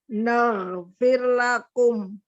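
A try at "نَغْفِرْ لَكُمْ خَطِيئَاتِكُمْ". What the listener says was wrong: Nah, itu panjang. A-nya panjang. Diulang dari naghfir lakum. Ayo, disambung.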